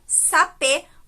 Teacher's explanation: Mas como tem um acento circunflexo, a gente tem a palavra sapê, com um E fechado.